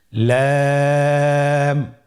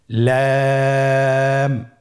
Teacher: লাম হরফটির মাখরাজ হলো জিহ্বার আগার কিনারা উপরের দাঁতের মাড়ির সঙ্গে লাগিয়ে উচ্চারিত হয়।